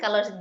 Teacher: Jadi 'la' memiliki panjang dua harakat. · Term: mad thabi'i